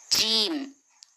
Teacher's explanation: जीम मखरजेज शजरी जबान के दरमियानी हिस्सा और तालु के दरमियानी हिस्से से जीम अदा होता है।